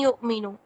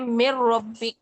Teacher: نون کی آواز آ رہی ہے، نون کی آواز ختم نہیں ہو رہی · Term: ادغام ناقص